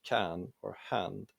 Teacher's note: /æ/ is kind of in between /a/ and /e/ - it's the vowel in English can or hand